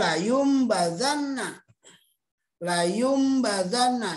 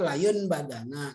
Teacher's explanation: Nun mati atau tanwin bertemu dengan huruf ba. Dalam bacaan ini, bacaan nun mati atau tanwin berubah menjadi bunyi mim. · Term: iklab